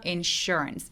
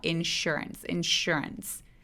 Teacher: S 뒤에 U가 따라오면 SH처럼 발음하게 됩니다.